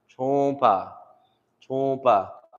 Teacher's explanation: since it's paired with an M, it does kind of have like a little bit of a nasal sound